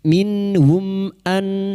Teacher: mim sukun bertemu hamzah idhar syafawi, mim sukun dibaca jelas tanpa mendengung. Bertemunya mim sukun dengan huruf hijaiyah selain mim dan ba idhar syafawi, mim sukun dibaca jelas tanpa mendengung. · berikutnya nun sukun bertemu hamzah idhar halqi, nun sukun dibaca jelas tanpa mendengung